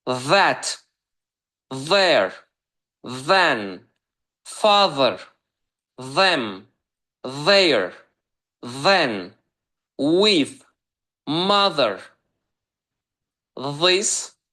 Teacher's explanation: Bu sözlərdə isə th hərf birləşməsi pəltək z olaraq oxunacaq.